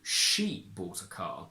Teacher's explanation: you must stress she if you want me to understand that the difference is substantial in who did the action.